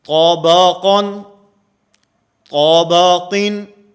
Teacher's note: بسا اوقات اس میں غلطی یہ ہوتی ہے طابقن، طابقین، یعنی طا اور قاف کے موٹا پڑھنے کے ساتھ ساتھ ہم با کو بھی پر کر دیتے ہیں ، با بھی موٹا پڑھا جاتا ہے، اور بسا اوقات اس